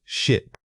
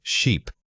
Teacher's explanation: The sheer difference between these two words comes down entirely to that single vowel sound. If you hear a short quick burst of air, it's ship. If you hear a sustained stretch sound, it must be sheep.